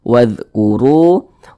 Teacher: huruf ra dibaca tabkhim, dibaca tebal. Jadi huruf ra yang memiliki tanda baca dhammah.